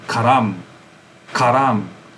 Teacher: very likely it would be that the emphasis is on the second syllable